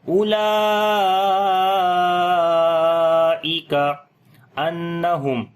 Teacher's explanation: نون کے اوپر شد ہے، غنہ کریں گے